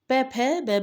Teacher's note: प भ में हमारे ओष्ठ व्यंजन होते हैं